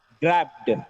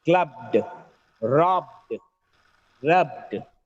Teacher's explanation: There should not be a vowel sound in between b and d.